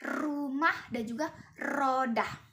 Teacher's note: er ini udaranya keluar, menghasilkan getaran lidah yang disebut dengan tril